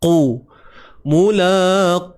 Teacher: Okey, huruf qaf, pangkal lidah naik.